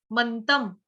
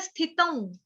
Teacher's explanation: त के ऊपर जो बिंदी है, अनुस्वार है, उसका उच्चारण होगा आधे म से